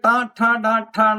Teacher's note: നാവിന്റെ അഗ്രം നേരെ മേൽത്താടിയിലെ മുകളിൽ പോയി തട്ടുകയാണ് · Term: ടകാരം